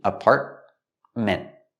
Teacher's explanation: with apartment you have the te in the middle is a stop te